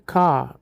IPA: kɑː